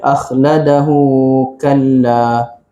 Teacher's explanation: Kita anggap sambung kita anggap sambung akhladahu kalla. Maka kat situ ha bulat bertemu dengan huruf kaf. Jadilah dia mad silah qasirah, dibaca dengan dua harakat sahaja.